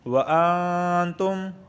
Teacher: یعنی زبان کی نوک اوپر کے تالو سے نہیں لگے گی، نرم غنہ جسے کہتے ہیں